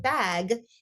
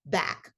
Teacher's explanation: the final phonological pattern is final consonant devoicing